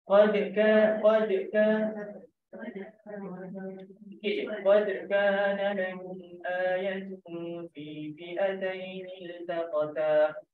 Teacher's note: Qalqalah sughra ni maknanya sikit je lah lantunan dia, jangan melampau sangat.